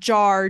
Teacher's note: I couldn't produce what's called a post-vocalic R, which is an R following a vowel. So if you have the word jar, J-A-R, A is the vowel, so that R.